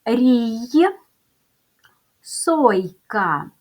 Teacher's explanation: Ми чуємо що приголосний звук й вимовляється м'яко позначаємо двома рисочками рій сойка йод йод перший звукй М'який приголосний